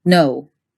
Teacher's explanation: the American English variant is actually two vowels. You start at o and you end at u.